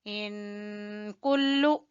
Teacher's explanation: باریک کاف ہے، کلو لمبا نہیں کرنا، کلو نہیں کہنا، کلو۔